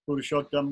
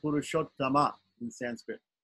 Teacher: We don't say Arjun, we don't say Purushottam, we say Purushottama in Sanskrit. It's a short A at the end, but it still has to be there.